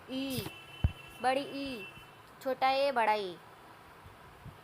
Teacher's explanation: उच्चारण स्थान की दृष्टि से स्वरों को 3 वर्गों में विभाजित किया जा सकता है, जो निम्न है। अग्रस्वर जिन स्वरों के उच्चारण में जीवा का अग्रभाग ऊपर उठता है, अग्रस्वर कहलाते हैं।